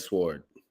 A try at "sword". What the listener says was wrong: No, you don't pronounce the W.